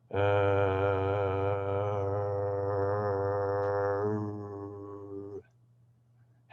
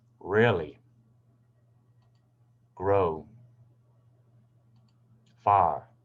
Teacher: First, I'll make the voice sound, then I'll bring my tongue slowly to the back of my mouth and curve it up, and then I'll make a sort of a round shape with my mouth